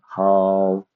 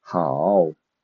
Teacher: a third tone, that is a falling and rising tone